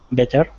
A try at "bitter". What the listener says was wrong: Bitter with an I. And try to make that T into a D. And one of the ways you can make sure that it's a D, not a T, is when you're making those vowel sounds, you can feel your throat.